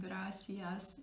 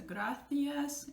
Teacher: C followed by an E and I, I'm saying in English, it's a S or th, depending on Spanish or Latin American Spanish